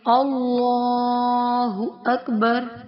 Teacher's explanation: اللہ کا لام موٹا پڑھا جائے گا اور کھڑا زبر کو ایک الف کی مقدار کے برابر کھینچ کر پڑھا جائے گا